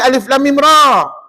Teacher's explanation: Ra tu 2 harakat aja, jangan 6 harakat pula ya.